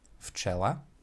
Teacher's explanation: the voiced v, will assimilate to the unvoiced f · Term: assimilation